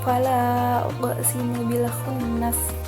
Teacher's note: Nah, pada bacaan itu terdapat hukum tajwid qalqalah sughra karena ada huruf qaf yang sukunnya itu sukun asli. Dibacanya dengan cara dipantulkan